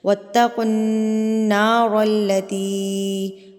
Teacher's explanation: یہ مد منفصل چھوٹی مد ہے، تو اس کو آپ نے 3 حرکات کے برابر کھینچ کے پڑھنا ہے